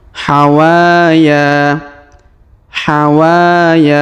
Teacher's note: huruf wa kita panjangkan dua harakat